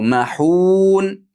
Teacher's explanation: Mahun cho'zib sukun bilan to'xtaymiz.